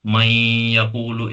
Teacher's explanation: नून की आवाज बिल्कुल नहीं निकली, यहाँ गुन्ना की आवाज निकली, नून गुन्ना की आवाज